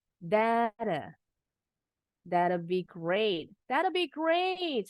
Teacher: thatnya bunyi t-nya enggak dituntasin